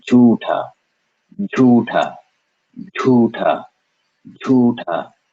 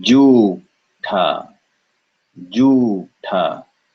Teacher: Ju, no air. Ju, followed by ta, air.